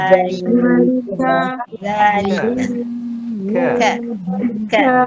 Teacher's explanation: Kalau kita sebut zalika ka tu tak ada angin. Tak betul tu. Dia kena ada angin. Ka. Zalika.